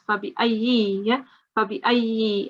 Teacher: You need to make sure that you do pronounce the kasra very openly as well.